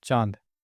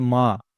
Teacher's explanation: चांद बोलते टाइम नाक और मुंह दोनों का इस्तेमाल हो रहा है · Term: चंद्रबिंदु